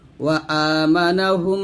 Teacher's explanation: মিম সাকিনের পরে যদি মিম অক্ষর পাওয়া যায় পরের মিমে তাসদিদ ধরে গুণনা করে পড়তে হবে। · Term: মিম সাকিনের ইদগামের গুন্নাহ